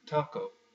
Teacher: when you say taco, the way that the Spanish and the Portuguese say it, the tongue is not where the Americans put it. It is right behind the teeth. So try saying taco, taco the way that you usually do it, but instead of having the tongue right in the middle, have it right behind the teeth.